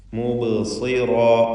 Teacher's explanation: ബാഇന് ഖൽഖല സുഗ്റ നൽകി ബാഇൻ്റെ ശബ്ദം ഹറക്കത്ത് പോലെ ചലിപ്പിക്കണം.